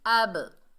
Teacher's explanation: हमजा के ऊपर ज़बर है, आगे बा साकिन है। बा रूफे कलकला में से आ रहा है, डबल साउंड पैदा होगी।